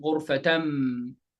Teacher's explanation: Instead of غرفتن, غرفتم. Instead of min, you're going to say mim, and you're going to preserve the ghunna. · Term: Iqlab